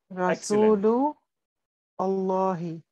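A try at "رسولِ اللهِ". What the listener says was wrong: Please, please read with joining. Yes, Muhammadun Rasulullahi.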